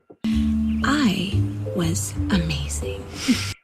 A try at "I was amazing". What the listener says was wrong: The end, the last part, if you notice, I was amazing, not with in. So it's ing. I was amazing.